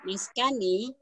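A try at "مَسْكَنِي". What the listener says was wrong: Maskani, Bu, bukan miskani.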